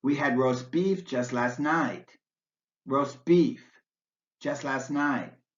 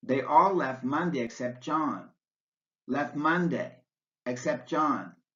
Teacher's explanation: T sound also drops out between two consonants